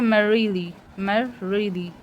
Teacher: मर बोलने में स्ट्रेस आ रहा है और रिली बोलने में नहीं आ रहा है, तो मैरीली ये भी है डक्टाइल.